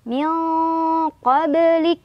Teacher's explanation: Ada qalqalah sugro karena ada huruf qalqalah yang sukunnya sukun asli yaitu huruf ba. Dipantulkan kecil aja.